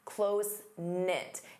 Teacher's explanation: Notice the K is silent.